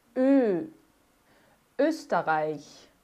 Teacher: Na verdade, é a boca do O e sai um E · O O com umlaut já vai ser esse O bem levado lá para frente. Eu falo que é uma trombetinha.